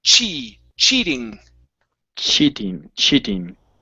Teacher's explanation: pay attention to those ch sounds so we're not saying she or she